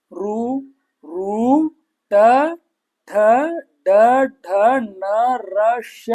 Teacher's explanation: ಹೌದಾ ಬಾಯೊಳಗೆ ಮಧ್ಯದ ಭಾಗ ಇದ ನೋಡರಿ ಮೇಲ್ಭಾಗ ಅದಕ್ಕ ಮೂರ್ಧ ಅಂತ ಕರೀತಾರೆ ಆ ಮೂರ್ಧದ ಸಹಾಯದಿಂದ ಹುಟ್ಟುವಂತ ಅಕ್ಷರಗಳಿಗೆ ಮೂರ್ಧನ್ಯ ಅಂತ ಕರೀತಾರೆ